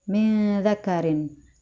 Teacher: mantul khalaqakum selanjutnya adalah hukum ikhfa yaitu pada kalimat Min dakarin nun sukun bertemu dengan huruf dza ya pada kata Min dakarin dibaca dengung dan ditahan tiga harakat